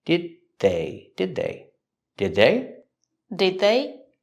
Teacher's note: Link the sounds. The D at the end of did is a stop D. Link it to the next word.